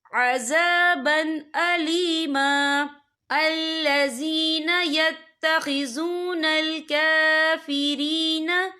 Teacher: بِأَنَّ لَهُمْ عَذَابًا أَلِيمًا، یا دیکھیں عذابًا، با کے اوپر تنوین ہے، تنوین کے بعد جو ہے حمزہ آ رہا ہے، اور حمزہ جو ہے حروف ہلکی کا ورڈ ہے، تو ہم یہاں اظہار کریں گے، ہم اسے بنا غننے کے پڑھیں گے۔